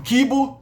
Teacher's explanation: Não houve palatalização das velares antes de vogais dianteiras